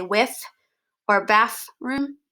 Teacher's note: certain vernaculars like an african english vernacular there is a common use of an f sound for a th sound